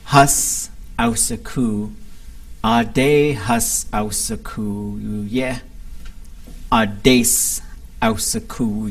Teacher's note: Hus is something that can contract, and so the hus can sometimes just turn into an s